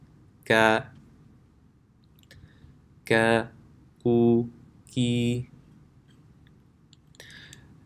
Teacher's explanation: the makhraj of Kaf is when the back of the tongue touches the palate. So remember, the difference is not as far back as Qaf.